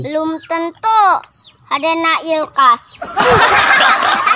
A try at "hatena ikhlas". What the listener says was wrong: Ilkas. Ulah ilkas sing ikhlas. Nah, hatena ikhlas gitu. Hatena ikhlas.